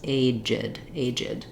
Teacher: in our second syllable, we have a vowel between our j and our d sounds